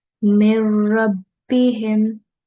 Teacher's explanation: And we call this idgham-e-kamil because this is complete merging without any ghunnah sound